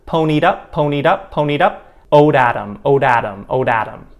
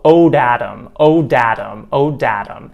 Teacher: we like to make things fast when we speak english so we do that fast flap tap sound